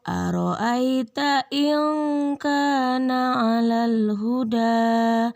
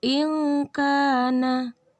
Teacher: Nah, ada nun sukun bertemu huruf kaf, maka hukum bacaannya adalah ikhfa, yang mana nunnya bunyinya disamarkan, kemudian berdengung karena bergabung dengan huruf ikhfa, kafnya. Jadi bacanya in kana.